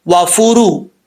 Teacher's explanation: را کے اوپر پیش ہے, پر پڑھا جائے گا یعنی موٹا پڑھا جائے گا